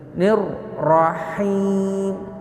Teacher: Mad arid lisukun, dibaca 4 atau 5 harokat.